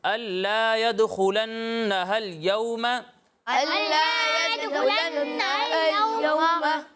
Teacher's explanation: یہاں نون مشدد میں ایک الف کی مقدار تک گننا کرنا ہے